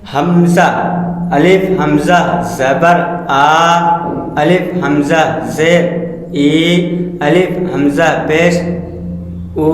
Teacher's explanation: الف مدہ، واو مدہ، یا مدہ منہ کے اندر کے خالی حصے سے ادا ہوتے ہیں، جیسے با الف زبر با، با واو پیش بو، با یا زیر بی، حمزہ ہا حلق کے سینے کی طرف والے حصے سے ادا ہوتے ہیں